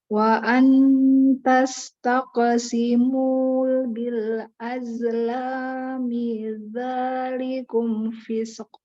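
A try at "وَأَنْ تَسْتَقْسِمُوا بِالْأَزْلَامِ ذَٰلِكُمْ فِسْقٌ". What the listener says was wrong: Tastaqsimu itu pantulannya jangan tastaqe, tapi tastaqo. Bil azlami lebih lembut supaya nggak kayak tadi agak cenderung mau tawalut gitu. Kemudian fis ini sempurna ya. Fis jangan sampai ada fisq, tapi fisqo langsung.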